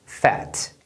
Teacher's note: Agora, se a palavra termina em uma consoante, o A vai ter o som curto, que é pronunciado com o som de E, E. Como se fosse um E de pé, só que bem mais aberto.